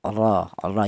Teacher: huruf ro yang berharakat fathah. Ini dibaca tafhim atau dibaca tebal. Ya, artinya tafhim itu tebal.